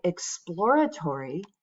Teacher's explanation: that second syllable gets the stress